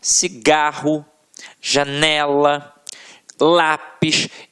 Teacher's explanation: a sílaba tônica está na penúltima sílaba · a sílaba que a gente proferiu com mais força sempre esteve na penúltima sílaba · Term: paroxítonas